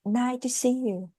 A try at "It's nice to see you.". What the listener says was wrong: Don't forget to pronounce the letter S, okay? Even if it's letter C here, you pronounce it as S. It's nice to see you.